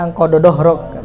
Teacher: Kalau orang Sunda anqadha dhahrak. Cuman dal ditebalkan. Itu juga sebenarnya tidak diperbolehkan ya.